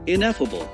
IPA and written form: ɪˈnɛfəbl (Ineffable)